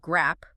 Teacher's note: There is no hidden vowel sound cushioning the two consonants. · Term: consonant clusters